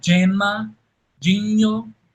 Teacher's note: O G antes de E, né, antes dessas vogais, ele vai soar africado como o inglês gentle, né?